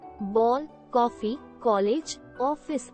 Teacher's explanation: आ तथा ओ के बीच की ध्वनि ओ को आगत स्वर कहते हैं।